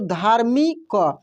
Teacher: देखिए, जो र का उच्चारण तेजी से होता है ना, जब तेजी से होगा और र का उच्चारण अक्षर के बाद होगा, तो देखिए जैसे धा, धा के बाद र का उच्चारण हो रहा है, लेकिन काफ़ी तेजी से हो रहा है, तो ये अगले अक्षर के ऊपर रेफ के रूप में लग जाता है, जैसे ये लगा है, ठीक ना।